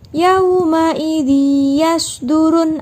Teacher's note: ada tanwin bertemu dengan ya, itu disebut dengan bacaan idgham bi gunnah